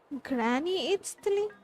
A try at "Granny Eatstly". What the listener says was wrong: Yes, Granny Eatstly. But emphasis on Eatstly, not Granny.